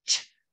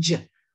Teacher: We're going to add voicing. Say ch with your voice box on, and that becomes j. Voice box off, ch.